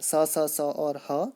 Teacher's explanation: जबकि आपके जो ऊष्म व्यंजन हैं स स स और ह, ये आपके महाप्राण में आते हैं, क्योंकि इसमें घर्षण भी लगता है